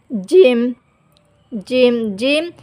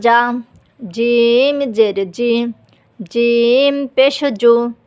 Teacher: জিম জিহ্বার মাঝ থেকে শক্তভাবে আদায় হবে। জিম জিম জিম জিব্বা উপরের তালুতে লাগিয়ে শক্তভাবে আদায় করবেন।